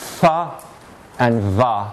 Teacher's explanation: They are the sounds f and v. They're produced by taking the lower lip and making it go towards the upper ridge of teeth.